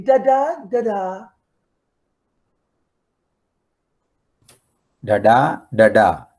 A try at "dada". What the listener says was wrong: I did not hear dada. You said nga nga nga nga.